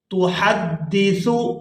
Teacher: یہاں پر ہا ہے ہا کو اچھی طرح سے حلق سے ادا کرتے ہیں